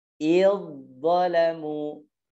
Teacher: Kemudian za ketemu dengan dha. Nah, tarik karena za ini hurufnya tipis, maka tarik dari tipis menuju tebal, gitu ya. Idzalamu.